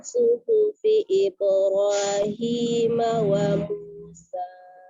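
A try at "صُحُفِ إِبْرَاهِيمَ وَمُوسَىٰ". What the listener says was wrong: Itu tadi hi-nya kurang jadi kayak hi, suhu. Ayo, ha-nya juga kurang pas di ha. Ya, suhufi.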